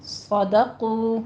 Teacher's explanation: صدقو میں صاد کو پر پڑھنا ہے، سیٹی کی آواز آنی چاہیے، صدقو، سودو نہیں کہنا، ٹھیک ہے، دال باریک رکھنا ہے، آگے قو پر پڑھنا ہے، واو مد ادا کرنی ہے، صدقو، اور یہاں پہ مد صرف عوض ہے، ٹھیک ہے، مد عوض ہے اس لیے 2 کاؤنٹ کرنا ہے، بس اسی طرح سے اس کو سٹاپ کر دینا ہے، زیادہ لمبا نہیں کھینچنا۔